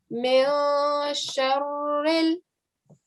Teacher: because sheen is not one of your throat letters we're going to hide the sound of the noon